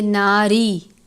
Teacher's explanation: را کے نیچے زیر ہے اس لیے را کو باریک پڑھیں گے